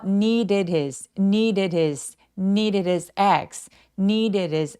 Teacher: 이렇게 D들이 계속해서 모음 사이에 끼어 있는 느낌이고 대명사인 his의 H 소리는 막 약화시킬 때가 많아요. 그래서 마치 H가 없이 그냥 모음으로 연결되는 느낌이라서이 모음 사이들의 D들은 계속해서 굴러가는 느낌.